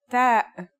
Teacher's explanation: the pronunciation is like the English T except you should release your breath with a strong burst of air